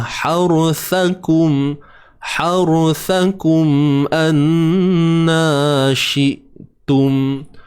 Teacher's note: Jelaskan izhar syafawi. Mim mati bertemu hamzah. Kemudian nun bersabdu haruthakum anna syi'tum. · Huruf sa yang ada 3 titik tu kena keluarkan sedikit sahaja hujung lidah.